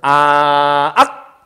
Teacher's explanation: 어금니 근처에 소리가 나기 때문에 어금니 소리라고 하는 거고 정확히 말하면 이 어금니 소리는 혀뿌리가 목구멍을 막아서 나는 소리란 뜻인 거죠